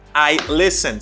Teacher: And next sentence, I listen. Sometimes people say I listen, or they pronounce T. No, guys, do not pronounce T in this word.